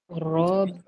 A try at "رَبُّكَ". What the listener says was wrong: Jangan rapat kuat-kuat bibir tu, tak boleh bergerak, nanti dia terstop dan bunyi dia berbeza. Kalau rapat kuat sangat, dia jadi huruf B. B contohnya batu ba. Okey, contohnya batu. Ini bibir antara dua bibir tekan kuat.